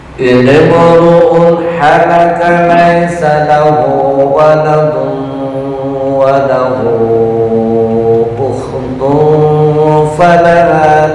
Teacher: Ukhtun dengung, tanwin bertemu fa, ikhfa.